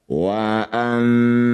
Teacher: Wa anna nun bertasydid disebut bacaan ghunah musyaddadah. Dengungkan dua harakat.